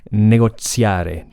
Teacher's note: That went through a process called assimilation, which basically means that hard T sounds, like in negotium, became like a TS sound, or even towards a whole S sound